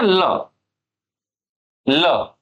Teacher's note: जीव के बगल से हवा निकल गई और पता भी नहीं चला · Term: पार्श्विक वर्ण